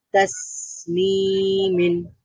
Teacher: সিন সুকুন আছে তার মানে সাউন্ডটা জারি থাকবে কারণ এটা হরফ তাহলে আমরা পড়বো তাসমিন যদি আমরা তাসনিমিন পড়ি · তাকযীবিন এর পরের লাইনে আপনারা সবাই নিশ্চয়ই বুঝতে পারছেন সিন সুকুন আছে, তার মানে সাউন্ডটা জারি থাকবে কারণ এটা রিখওয়ার হরফ